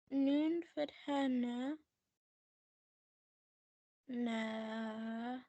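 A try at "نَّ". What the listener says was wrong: No. Why are you stretching that? It's noon fatana, right? It's connecting to the next thing. Next letter is also getting the shadda, right?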